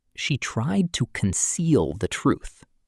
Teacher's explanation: with the stress on seal